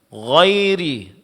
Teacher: huruf ra di sini karena baris bawah ditipiskan